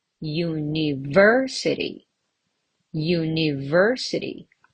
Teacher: University on the third syllable.